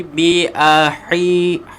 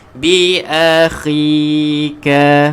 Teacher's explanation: Sebab huruf kha ni huruf yang keluar daripada halkum, huruf halqi.